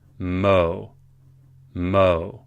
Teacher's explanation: You do not pronounce the vav like a V here. It is part of this very long vowel. You just pronounce this like cholam.